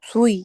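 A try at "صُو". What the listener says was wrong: আপু সুই না, সুইউ। সদের সুই, তাই না? হয়ে এটা ওয়াওয়ের দিকে ধাবিত হবে, সদ ওয়াউজের সুইউ।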